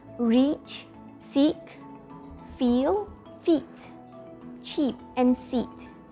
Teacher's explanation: there's tension in your mouth when you're saying it